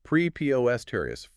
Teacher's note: four syllables, stress on the second